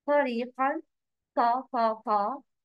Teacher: ta has heavy sound. Heavy means mufakhama.